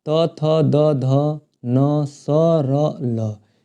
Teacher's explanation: दांत के ऊपरी भाग में जीभ आके टच करती है तो इन सभी वर्णों का उच्चारण होता है।